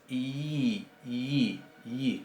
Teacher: Es básicamente una I, pero como dijimos, en la escritura puede indicar una vocal larga que tenga la calidad vocálica de I o de E. Bien, y es un poquito más cerrada originalmente que nuestra I. Es I, I, I, casi como si estuviéramos poniendo una Y o una J muy suave. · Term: yod